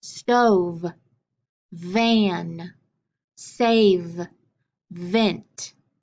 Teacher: finger on your neck and say do you feel vibrations yes that v really vibrates those vocal chords because it's a voiced sound